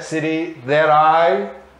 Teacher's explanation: Juntos esse T com o I e fica um som meio R, né? There I live, sem falar o E, né? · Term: link